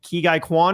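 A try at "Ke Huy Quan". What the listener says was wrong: Ki-Hoi Kwan. It's an H. It's not Guy. It's all right. It's a mistake.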